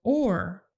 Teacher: the jaw still and tightening up the muscles of the tongue the or sound is basically the vowel o plus the vocalic r sound